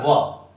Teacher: दंतोष्ठ, दांत और ओंठ से मिलकर जो उच्चारित होता है वो होता है व